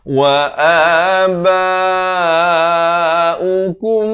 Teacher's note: mim mati bertemu mim didengungkan dulu 2 harakat di sini